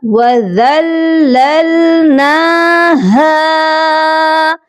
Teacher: ہا کی آواز سینے والے حلق سے آئے گی، اور ہا کو ہم ایک الف کی مقدار لمبا بھی کر کے پڑھیں گے کیونکہ اس کے ساتھ الف مدہ ہے۔